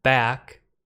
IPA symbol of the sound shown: æ